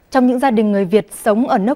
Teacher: sometimes she has these rising tones that make it sound soft. But that softness is slightly removed when she does glottal stops and blocks, which kind of removes points a little bit from me when it comes to the beauty of the language.